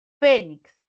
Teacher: sílaba tónica, fe, es la penúltima sílaba. Terminó en X.